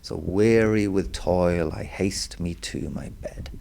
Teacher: we don't stress the second syllable of weary, we stress the first. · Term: trochee